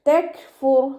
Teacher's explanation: ഇവിടെ കാഫിന് സുക്കൂനാണ്, കൽക്കല ലെറ്ററില്ലാത്തത് കൊണ്ട് ഹാഫ് സുക്കൂന് കൊടുക്കുക. കാഫും തായും സുക്കൂനാവുമ്പോൾ കുറച്ച് എയർ പുറത്തോട്ട് പോകണം, സൗണ്ട് കൊടുക്കുകയും ചെയ്യണം കേട്ടോ. തെക്ഫുർ തെക്ഫുർ തെക്ഫുർ എന്ന് ഫുൾ സുക്കൂന് കൊടുക്കരുത്.